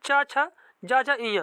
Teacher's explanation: जो चा वर्ग होता है इसे बोला जाता है तालव्य व्यंजन